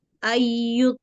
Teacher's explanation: nun sukun bertemu dengan ya idgam bighunah. Dibacanya dilebur dengan didengung.